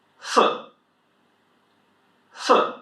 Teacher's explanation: Fourth tone again, falling, sharp. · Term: 4th tone